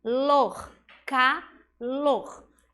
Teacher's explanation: Esse R no final faz o sonzinho da garganta, como se fosse um pigarrozinho